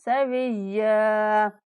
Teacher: या पर वक़्फ़ करते हुए 1 अलिफ तक लंबा करके वक़्फ़ करेंगे